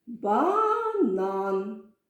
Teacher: якщо ми поставимо перший склад то вийде банан це неправильно тому на другий склад падає наголос